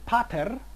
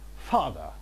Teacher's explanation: Now if we look at the initial elements, we have in the classical languages a bilabial plosive and in English a labiodental fricative